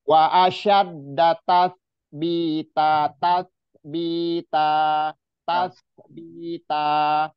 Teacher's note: sya yang di tengah-tengah lidah ya bertemu langit-langit